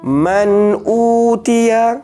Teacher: dia u tu kena panjang macam mad asli juga, ya, tapi mad badal.